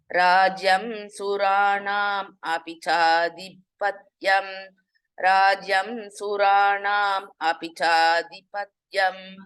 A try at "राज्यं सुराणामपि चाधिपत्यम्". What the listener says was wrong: You should not separate while you reciting Bhagini. Rajyam Suranamapi Chadhipatyam Mapi.